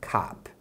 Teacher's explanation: O som curto da letra O é A ou O. No inglês americano é muito comum eles falarem o som de A. Então é um O com a boca aberta.